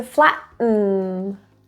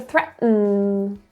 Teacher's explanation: there is a glottal stop that forceful air that's being pushed out from your throat it's not soft but um so the vowels really not produced at all let's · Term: glottal teas